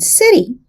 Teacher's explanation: it's pronounced quickly as a voiced alveolar tap or flap